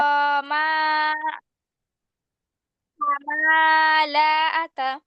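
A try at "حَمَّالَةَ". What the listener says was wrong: হামা কেন হবে, এখানে তাসদিদ আছে না। তাসদিদ আল্লাহ হরফকে কয়বার পড়তে হয় আপু। তার আগের হরকতের সঙ্গে একবার, আর নিজের হরকের সাথে একবার, তাহলে কি হবে।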